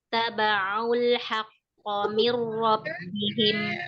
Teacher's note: nun mati ketemu ro berlaku di sana hukum idgham bila gunnah. Ro dibaca tafkim karena baharokat fathah.